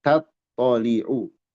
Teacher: Hendaklah diperhatikan tipisnya ta dan tebalnya th pada kalimat tat tholiu